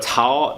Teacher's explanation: that like breathy TS sound isn't really in English